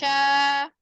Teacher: Yang ya. Sya, hembusan anginnya banyak. Karena memang suaranya dia menyebar. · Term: shin